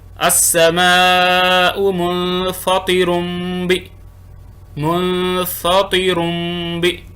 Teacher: اگلی مثال دیکھیں تنوین کے بعد با آ گیا، السماء منفطر بی منفطر بی، غنہ بھی کریں گے اور میم پڑھیں گے با کو